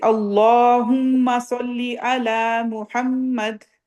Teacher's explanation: میم پہ شد آ رہی ہے اس کو تھوڑا سا لمبا ناک میں ہولڈ کرنا ہے